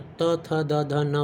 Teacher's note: त थ द ध न बोलने वक्त हमारी जीभ का जो टिप है, जीभ का जो ऊपरी हिस्सा है, टिप, नुकीला हिस्सा, वो बार बार आकर हमारे दांतों से टकराता है, इसीलिए इसे हम लोग कहते हैं दंत से टच करने वाला स्पर्श व्यंजन।